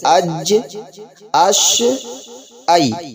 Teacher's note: طرف ہٹ کر نرمی سے ادا ہوتا ہے جیسے اک اب جیم شین یا غیر مدہ زبان کے بیچ اور اس کے مقابل اوپر کے تالو سے ادا ہوتے ہیں